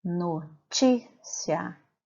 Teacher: Já na palavra notícia, quando eu faço a separação de sílabas dessa palavra, notícia, o ti se sobressai as demais sílabas, portanto, ele é a sílaba tônica.